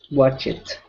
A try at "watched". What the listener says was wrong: So right now you're pronouncing an extra sound. You're saying watch it. Okay, you're pronouncing the E. Okay, so when we say this word, it's watch. Only the T sound.